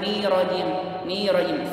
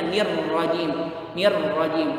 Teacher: Hati-hati, di rohnya ada alif lam syamsiah, ada alif lam, maka diidgomkan.